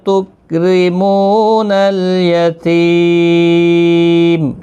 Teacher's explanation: میم ساکن پڑھا جائے گا وقف کی صورت میں، وقف بالاسکان ہوگا